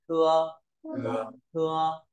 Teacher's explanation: Tờ giống thờ nhưng mà bật nhẹ hơi này